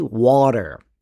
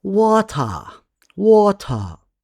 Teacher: In American English, the t sounds like a soft d.